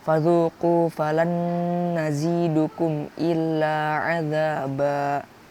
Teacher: Maka dari itu berlakulah hukum bacaan izhar syafawi. Sehingga mim sukun dalam bacaan tersebut harus disuarakan dengan terang dan jelas tanpa berdengung di bibir dengan mulut tertutup